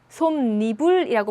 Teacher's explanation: 그럴 때 발음을 해보니까 솜이불이 아니라 솜니불이라고 발음이 되죠. 여기에 없던 니은 소리가 덧났어요. 자, 이런 게 바로 사이소리 현상.